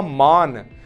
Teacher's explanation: माँ के साथ बड़ा आ जुड़ा हुआ है, तो आपने थोड़ा सा उसको खींच के बोला